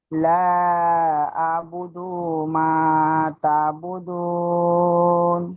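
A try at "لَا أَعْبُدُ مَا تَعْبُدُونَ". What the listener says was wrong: লা আবুদু, দালটা ইশারা একটু টান মতো হয়ে যাচ্ছে, টান হবে না, জলদি পড়তে হবে, হারাকাত।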